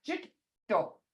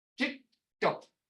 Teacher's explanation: You don't hear that first D because your tongue is on your palate behind your front teeth. Jito. You have to feel it, you can't hear it.